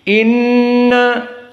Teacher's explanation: maka nun musyaddadah wujubul gunnah. Inna dari hidung.